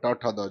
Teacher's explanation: ट ठ द जो है ये मुर्धन्य ध्वनियां है अर्थात इनका उच्चारण मुर्दा से होता है चलिए बात करते हैं